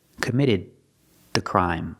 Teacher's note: the D at the end of committed is before a consonant so it's a stop D stop the air